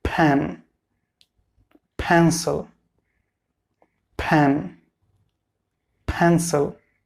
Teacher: You should be careful about the first sound, P. It will be aspirated.